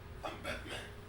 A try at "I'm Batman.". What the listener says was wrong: You have to make your voice a little deeper.